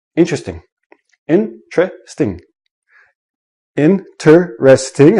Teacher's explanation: I have 4 syllables. When I actually say it naturally, it becomes 3 syllables, and the T and the R become like a CH